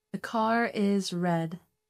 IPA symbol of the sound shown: ɹ